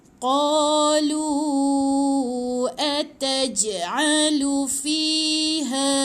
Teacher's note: fi lepas dia ada ya ni kena panjang 2 harakat